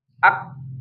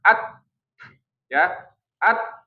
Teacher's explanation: Jadi ngantri pembunyiannya itu syiddah dulu baru hams.